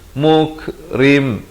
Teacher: muk itu ada bunyi hamas, bunyi angin itu